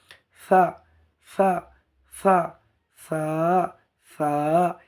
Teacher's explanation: জিভের আগাটা গিয়ে উপরের দাঁতের সামনে লাগবে।